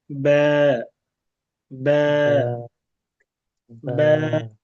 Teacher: ভেজা অংশটা উপরের দিকে থাকে আর শুকনো অংশটা থাকে নিচের দিকে। তো আমাদের যে ঠোঁটের ভেজা অংশ আছে এই ভেজা অংশ থেকে পাতলা করে উচ্চারণ করতে হবে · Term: পাতলা ব্যা